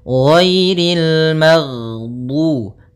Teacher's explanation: Jahar yaitu tertahannya nafas kita. Jadi ketika melafalkan ghain, nafas kita tertahan, suara kita dialirkan. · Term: sifat rokhawah